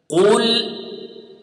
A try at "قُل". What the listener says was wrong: It is قو قو, it is not كو, it is not cool. No, it is قُل.